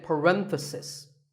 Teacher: if you talk about just one bracket you say parenthesis the stress is on Ren